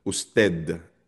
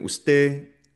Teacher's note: kapag yung D naman ay nasa end of the word, it's usually very soft or sometimes barely pronounced.